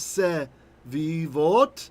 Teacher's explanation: the ah becomes a eh because we move the accent later. So saviv becomes sevivot.